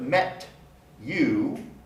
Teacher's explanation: the word met ends in a voiceless alveolar stop the t sound you begins with a palatal glide